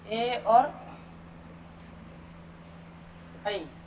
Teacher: कंठ तालव्य, कंठ और तालु से